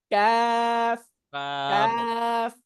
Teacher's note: একটু আগে বাড়বে, একটু আগে বেড়ে তার বরাবর উপরের তালুর সঙ্গে লাগবে। জিহ্বার গোড়া থেকে একটু সামনের দিকে বাড়বে, তার বরাবর উপরের তালুর সঙ্গে লাগবে। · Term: মধ্যখান পেঁচানো কাফ